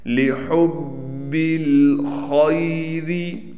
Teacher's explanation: خا موٹا پڑھا جائے گا، حروف مستعلیہ میں سے ہے